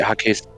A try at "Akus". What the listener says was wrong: There's no H. Ak. A-C-K. Ak-us.